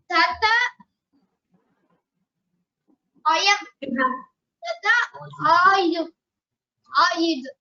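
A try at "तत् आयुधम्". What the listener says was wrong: Here the tat has a the second takara has a slanting line below. So it is tat. Tat ayudham. Ayudham. Tat ayudham.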